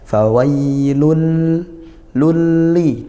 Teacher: dibaca masuk tanpa dengung langsung masuk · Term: Idam bila gunah